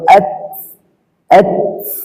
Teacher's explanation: তায়ের উপরে এবং কাফের উপরে সাকিন হলে, সাকিন করার পর হালকা বাতাস বের হবে। যেমন হামজা তা জবর আত, আত, হালকা বাতাস বের হবে।